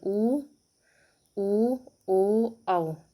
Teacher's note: वृत्त मुखी जिसमें होठों की मुखाकृति थोड़ा घूम जाती है